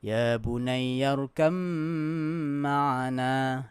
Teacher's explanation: So dia idgham mutajanisain, dia bi gunnah. Dia kena baca dengan dengung.